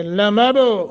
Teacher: باس ساکن ہے، قلقلہ کر کے۔